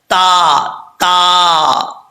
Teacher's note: تا جو ہے بریک پڑھا جائے گا، اس کو موٹا پڑھنے کی ضرورت نہیں ہے کیونکہ اس کا مخرج ہے تا کا. زبان کی نوک اوپر والے دانتوں کی جڑوں سے لگے تو تا پڑھا جاتا ہے